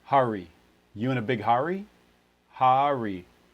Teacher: it's also really common for people to put a syllable break in between them indicating that there's a little bit of a separation between the vowel and the r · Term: vowel plus r